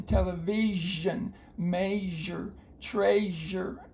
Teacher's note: that's actually a voice sh it's um Webster spelled it zh as in television measure treasure